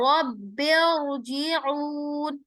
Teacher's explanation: रब को इरजिऊन के साथ मिलाते हुए हमजतुल वसल ड्रॉप हो जाएगा, और रब्बिरजिऊन, और रा हम तफखीम कर देंगे। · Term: कसरा मुफस्सल